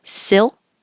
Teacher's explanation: again you won't hear the final K